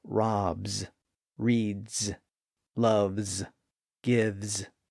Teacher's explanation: we can also hear that z sound at the end of other verbs that end in a voiced sound